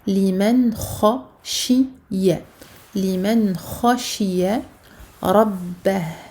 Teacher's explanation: Al-idhar parce que noun sakina suivi d'une lettre de la gorge, d'une lettre de al-huruf al-halqiyah.